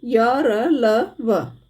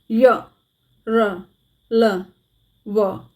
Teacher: बीच में अर्थात स्वरों और व्यंजनों के बीच में होता है इनका उच्चारण करते समय जीवा मुख के किसी भी भाग को स्पर्श नहीं करती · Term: अंतस्थ व्यंजन